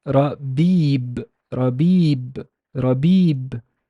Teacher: The b has a kasra because there's a ya, there's no vowel, so it's, and there's a ya after it, so it's a long E sound, long kasra